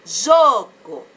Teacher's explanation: qual é a sílaba mais forte? É o jô. Aqui, ó, jô. Não tem acento, mas eu sei, porque é aquela sílaba que eu falo mais alto.